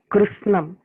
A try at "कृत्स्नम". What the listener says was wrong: हाँ एकदम ठीक है।